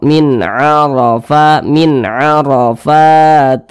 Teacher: maka cara membacanya itu disamarkan kemudian didengungkan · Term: ikhfa Hakiki